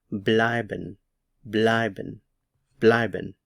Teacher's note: The stress is on the EI here, or the diphthong.